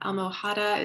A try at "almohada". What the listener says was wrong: Don't pronounce the H there. Almohada.